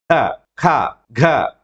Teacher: ఇప్పుడు చూడండి గాలి ఆగినట్టే ఆగి ఒకేసారి రిలీజ్ అయింది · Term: ప్లాసివ్స్